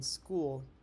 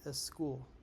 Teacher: For example, instead of saying school, he'll sometimes say a school. That extra e sound comes straight from the Spanish rules since words in Spanish usually don't start with an s followed by another consonant.